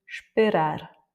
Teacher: Donc ici, le E n'a pas d'importance, l'accent tonique est sur le A de toute façon de la fin parce que ça se finit par un R, et donc en fait, on va couper le E et on va dire esperar. Está.